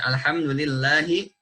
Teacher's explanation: lillahi dibaca 2 harokat. Apabila kita baca lebih, alhamdulillahi rabbil, nah ini sudah menambah kadar mad, walaupun tidak mengubah makna.